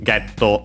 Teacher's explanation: it is getto, accented on the ge, just like in English